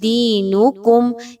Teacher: یہاں پر جو یا مدہ ہے اس کو 1 سے 2 الف کے برابر لمبا کریں گے